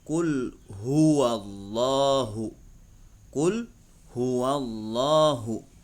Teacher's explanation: Hwa dan Allah itu adalah huruf H tafkhim harus dibaca tafkhim Maksudnya harus dibaca tebal